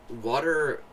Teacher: I mean, it isn't a silent T. It tends to turn into kind of a D sound, but or a flap, but not silent.